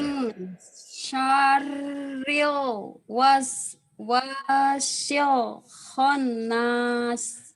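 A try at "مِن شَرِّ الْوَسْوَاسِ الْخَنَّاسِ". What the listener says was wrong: N-nya 3 tuh. Naik Honda, Honnas tuh N-nya 3 tuh.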